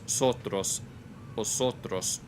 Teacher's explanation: vosotros with the s sound. It's in between a s and a sh. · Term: retracted S